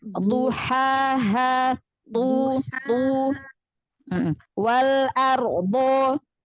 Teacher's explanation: Hati-hati di huruf dhad ya, angkat lagi pangkal lidahnya. Dhad itu punya sifat udah dia isti'la, lalu itobaq, lalu istitolah ya.